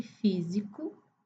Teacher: em físico, o som do S é som de Z. O S entre duas vogais sempre vai ter som de Z.